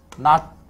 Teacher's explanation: 시옷이라고 표기는 했지만 발음은 이렇게 한단 말이야. 그 말은 현대국어에서는 시옷을 쓰든 디귿을 쓰든 무조건 발음은 뭐? 디귿으로만 한다는 뜻인데